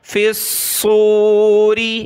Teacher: صاد کو موٹا کیا